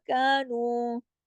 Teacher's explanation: کانو دونوں باریک حروف ہیں، دونوں برابر برابر کھینچیں گے